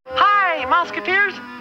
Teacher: the smoking dried out the vocal cords, which lowered the pitch